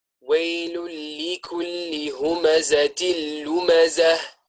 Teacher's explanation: Ha, which we said came from the deepest part of the throat, the part that is closest to the chest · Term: letter Ha